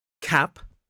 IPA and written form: kæp (cap)